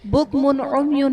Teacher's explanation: بکمن عمیون میں میم پر دو پیش کی تنوین، تنوین کے بعد حروف حلقی میں سے عین ہے تو یہاں پر اظہار کا قاعدہ ہوگا، یعنی تنوین میں ہم غنہ نہیں کریں گے